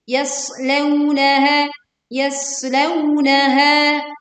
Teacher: yas tekan dan alirkan suara dan juga anginnya. Yas dengan suara tajam